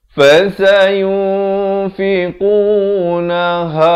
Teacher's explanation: makhrajnya dipangkal kerongkong ha. Su di hujung lidah.